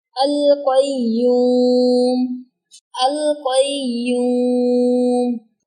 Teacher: यहाँ पर हमने यू को लंबा किया क्योंकि वाव साकिना से पहले याए मज़मूम है, यानी कि या के ऊपर पेश है और साथ में वाव साकिन है, तो अल-क़य्यूम अल-क़य्यूम। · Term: वाव मद्दा